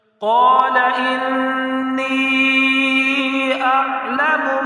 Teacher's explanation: قَالَ إِنِّي، مد منفصل ہے اور نون مشدد ہے تو نون مشدد میں غنہ کرنا ہے۔ نون کے نیچے زیر ہے، یا ساکن ہے، نون یا ساکن سے پہلے اگر زیر ہو تو یا مدہ ہوتا ہے، لہٰذا اس کو ایک الف کی مقدار کھینچ کر بھی پڑھنا ہے۔